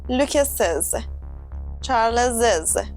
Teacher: when we add the apostrophe s after a name that ends in s, We say Lucas's with a Z sound.